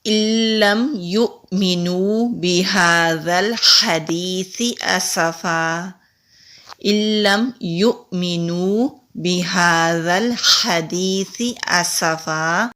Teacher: وقف کہتے ہیں سانس اور آواز دونوں کو روک کر پڑھنے سے رک جانا۔ جب سانس اور آواز دونوں کو روک کر پڑھنے سے رکیں گے تو تنوین کی بجائے 1 زبر ہوگا